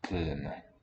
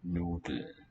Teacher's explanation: Because you have DLN, and the D can only be a consonant, can't be a vowel, so the L will stay vocalic and the N can now be a consonant.